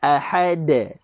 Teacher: huruf dal ini juga ada qalqalah berada pada hujung ayat, maka qalqalah kubra, maka tuan-tuan kita akan baca dia dengan lantunan besar